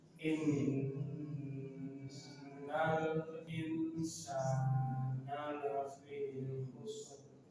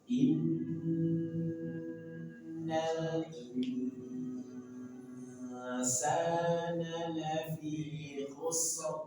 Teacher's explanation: Innal insana lafi khusr. Perhatikan nun bertemu dengan sin, maka ikhfa, tahan 2 sampai 3 harokat, samarkan dan dengungkan. Dan dengungnya tartib tipis.